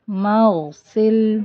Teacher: غین کو running sound کے ساتھ ہی پڑھیں گے